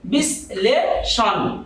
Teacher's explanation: তো আপনারা দেখতে পাচ্ছেন এখানে তালব্য স এর পর দন্ত ন, রি, বয়শূন্য র, রফলা, ল এগুলো থাকলে ওই তালব্য স এর উচ্চারণ হয়ে যাবে দন্ত স